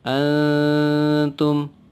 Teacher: nun sukun atau nun berharakat sukun bertemu dengan huruf ta, salah satu huruf ikhfa, dibaca samar, antum.